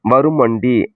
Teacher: இவ்வாறு திரியும் நகர நகர முன்னுள்ள மகரம் தன் அரை மாத்திரை அளவிலிருந்து குறைந்து கால் மாத்திரை அளவில் ஒலிக்கும். மகர ஈற்று சொல் முன் வகர எழுத்து முதல் வந்து சேரும்போது நிலைமொழி மகரம் குறைந்து ஒலிக்கும். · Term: மகர குறுக்கம்